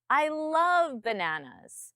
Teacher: I love bananas my tone comes up on love